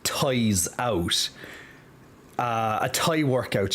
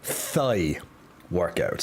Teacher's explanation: with the Irish, and we generally don't pronounce the H after T's.